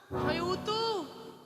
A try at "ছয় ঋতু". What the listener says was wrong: ছয় ঋতু উতু না।